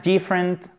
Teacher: accent tonique sur la première syllabe